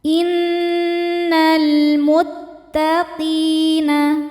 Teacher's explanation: alif lam menghadapi huruf qamariah yaitu mim dibaca lamnya jelas. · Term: alif lam qamariah, alif lam qamariyah